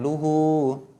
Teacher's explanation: Nah, ini mat tabi'i juga, ha domirnya luhu. Jadi jangan dibaca pendek gitu karena dia mat tabi'i.